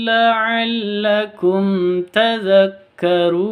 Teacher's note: Mim mati bertemu dengan ta, cara bacanya jelas, terang, tidak boleh dengung. Kenapa? Karena bacaan izhar safawi.